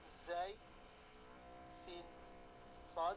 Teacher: ujung lidah bertemu dengan gusi bawah